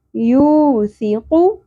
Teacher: सा बारीकी से अदा होगा और नरमी से पढ़ना है, सीटी की आवाज़ नहीं आनी चाहिए। फी क़ाफ पुर होगा, हाथ नरम तालू से अदा करेंगे क़, ठीक है।